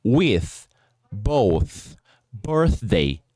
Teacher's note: Ou seja, o som não sonoro do TH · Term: voiceless sound